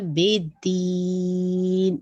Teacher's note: दाल पे आप देखिए शद है तो आपने इसको ट्वाइस पढ़ना है